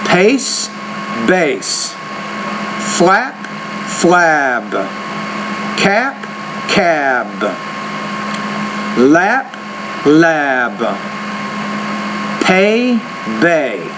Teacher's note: And voiced and voiceless just means when you say the P, there's no vibration here. When you say B, there is vibration in your vocal folds, right?